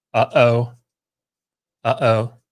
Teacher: You go, and then you can feel it in the back of your throat. You constrict your throat before you start the O sound. So that glottal stop, aleph represents that glottal stop.